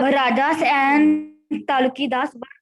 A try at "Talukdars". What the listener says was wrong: Taluki, Talukidars? Is it Talukidars or Talukdars? Rajas or Talukdars, not Talukidars.